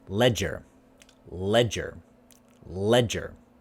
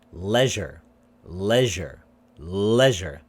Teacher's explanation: the z is a little bit longer